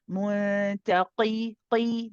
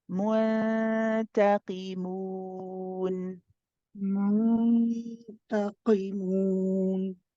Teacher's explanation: this qaf, because of the kasra, is the lowest level of heaviness for both opinions. And this means that we don't over-exaggerate it.